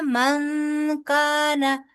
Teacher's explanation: नून साकिन के बाद काफ आ रहा है, लिहाजा यहाँ पर इख्फा करेंगे